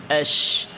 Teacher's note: শিন জিহ্বার মধ্যখান উপরের তালু শিনের মাখরাজ